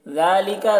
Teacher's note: ज़ाल को बारीक पढ़ना है, यहाँ पर खड़ा ज़बर है, एक अलिफ के बराबर खींच कर पढ़ेंगे